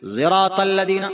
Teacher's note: صاد کو تھوڑا ذات کی طرف امالہ کر کے پڑھتے ہیں